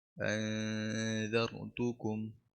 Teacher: نون ساكنة مخفى عند الذال المفتوحة بغن حركتين